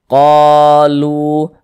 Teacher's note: maka huruf yang memiliki tanda baca fathah ini dibaca panjang sehinganya qo dibaca panjang Mad Thobi'i panjang dua harakat